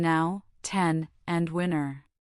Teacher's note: To create this sound, you place the tip of your tongue against the alvear ridge behind your upper teeth just as you do for D& but instead of releasing a pllosive, you allow the voice to flow continuously through your nose. It is a smooth resonant sound